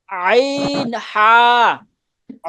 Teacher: আইন হা একদম একদম গলার মধ্যখান থেকে আইন হা